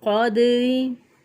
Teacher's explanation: रा को बारीक पढ़ेंगे क्योंकि रा के नीचे ज़ेर है